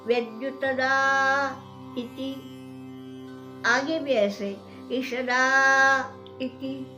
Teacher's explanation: आ की मात्रा यानी दीर्घ है, और दीर्घ भी दीर्घ नहीं है, प्लुत है।